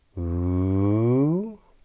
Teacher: a glide in the pitch of our voice upwards. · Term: rising intonation